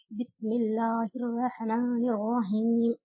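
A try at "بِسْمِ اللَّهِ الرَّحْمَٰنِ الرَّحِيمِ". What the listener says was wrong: ہا کی آواز کلیئر کیوں نہیں آ رہی؟ بسم اللہ الرحمن الرحیم. بسم اللہ الرحمن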